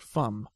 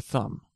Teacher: they'll use the uh the F instead of the th sound